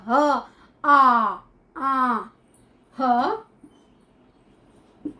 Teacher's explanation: स्वर तंत्र, स्वर तंत्र से हमारा बनता है जैसे कि ह बोल के देखिए, लगेगा कंठ में अंदर से आवाज आ रही है, ह आ ह, ह और आ शब्द जो है इसका उच्चारण स्थान जो है ये हमारा स्वर तंत्र होता है।